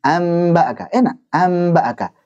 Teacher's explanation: Sama dengan nun dari segi ada gunnahnya, sama dengan ba sama-sama nempel, dari dua bibir nempel. Jadinya ringan mengucapinya. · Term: iqlab